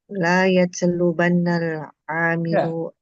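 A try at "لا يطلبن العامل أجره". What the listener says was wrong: lanya jangan panjang-panjang. Singkat, satu harokat.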